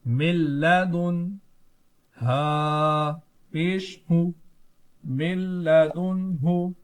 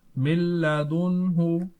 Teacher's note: پہلے والے نون ساکن میں بھی گننا نہیں کریں گے کیونکہ ادغام بلا گنہ ہے, اور دوسرے والے نون ساکن میں اظہار ہے اس لیے گننا نہیں کیا جائے گا